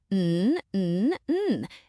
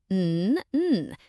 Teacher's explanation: Can you feel your nose vibrating just a little bit? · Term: humming sound